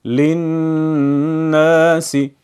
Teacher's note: ہم لام کو نہیں پڑھیں گے کیونکہ لام پر کوئی حرکت نہیں ہے اور اگلے حرف پر تشدید ہے۔ للناس اگر اس کو ایسے پڑھا للناس تو غلط ہوگا۔